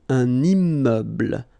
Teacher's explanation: So you can see I'm making this little liaison between the two.